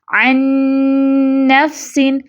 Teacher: ادغام تام بالغنہ، یعنی مدغم کو، یعنی نون ساکن کو نون متحرک میں پوری طرح غنہ کے ساتھ ملانا · عین جو ہے وہ ڈائریکٹ اگلے نون سے مل رہا ہے